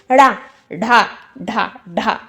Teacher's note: उत्क्षिप्त व्यंजन वह होता है जब हमारी जो जिबिया होती है थोड़ा ऊपर उठकर मूर्धा को स्पर्श करते हुई तुरंत नीचे गिरती है